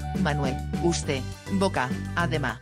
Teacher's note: Finalmente, algunas consonantes finales se saltan